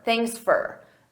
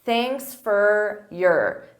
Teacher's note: At a natural pace, native speakers, we reduce sound. So for becomes fur